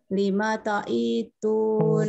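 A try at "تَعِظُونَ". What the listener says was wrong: Nah, hati-hati i-nya kepanjangan, Bu. Ta'idhu.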